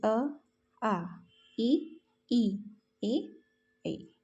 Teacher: जिन स्वरों के उच्चारण में होंठ गोल या वृत्त के आकार में नहीं बल्कि सामान्य या फैले हुए होते हैं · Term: अवृतमुखी